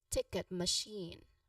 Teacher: So ticket ticket machine for machine the stress is on the second syllable shin okay which um you know which has a clear long e sound shin. Now the first syllable ma should be a soft unstressed sound. So again for the first word well for the first word ticket you emphasize on the you put the syllable stress on the first sound tick.